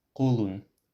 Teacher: with a back and rounded o, becomes kolun, of the arm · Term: rounding harmony